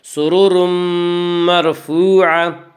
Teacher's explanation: سرور مرفوعہ میں ادغام بالغنہ ہوگا